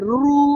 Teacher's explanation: जीभ अजून जास्त बेंड होते मृधेला जाऊन भेटते तो मूर्धन्य आहे . असाच रु म्हणा रु म्हणून बघा ते जीभ जास्त फिरते